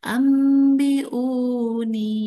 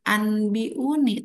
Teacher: cara bacanya itu nun ditukarkan kepada mim, ya. Jadi, kekalkan, dengungkan mimnya. Nah, jadi si nun matinya jadi enggak ada karena diganti dengan mim. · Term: iqlab